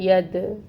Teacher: دال جو ہے یہ حروف قلقلہ میں سے ہے، قلقلہ ہوگا اس پہ، ساکن ہے، دال پہ قلقلہ ہوگا، ید، ٹھیک ہے؟